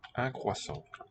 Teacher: And OI has always sounded wa.